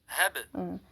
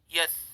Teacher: Kenapa di situ disebut muqalqalah? Karena ba ini termasuk huruf qalqalah, jadi dia bacanya mantul.